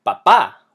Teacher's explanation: the word has an emphasis on the last a not the second last one